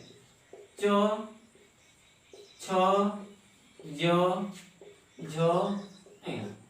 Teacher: च वर्ग का उच्चारण स्थान कहां से होता है, ताल से